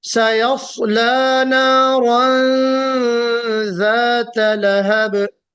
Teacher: रा को मोटा पढ़ना है।